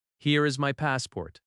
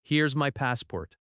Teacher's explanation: Notice how here is becomes here's. That reduction is very common.